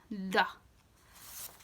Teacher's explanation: sounds like duh kind of coming from the back of the throat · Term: D H